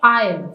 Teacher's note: डू और have की जो वीक फॉर्म्स होती है उनको अनस्ट्रेस्ड रहने दिया जाता है